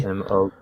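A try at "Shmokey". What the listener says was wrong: No, Smokey. You forgot the H.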